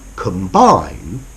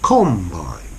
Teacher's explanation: whereas with the noun a combine the stress is on the first on the com